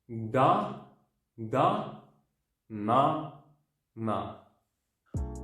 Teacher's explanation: tongue position of D, but you pronounce N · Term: Nian